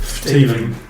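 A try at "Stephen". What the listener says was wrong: No, PH.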